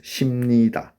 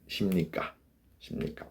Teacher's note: 버 changes to 머. So this is nasalization.